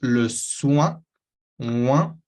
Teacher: Después tenemos le soin, oin, cuidado, vamos a tener este sonido wa, que se escribe o-i, pero se pronuncia wa en francés, y tenemos una n al final que va a venir nasalizar todo eso, este wa, vamos a tragarlo por la nariz, realmente aspirarlo, y la meta es sentirlo en su nariz, sobre todo en la parte superior de su nariz o en su paladar superior, pero al paladar de atrás, así se hace esa nasal.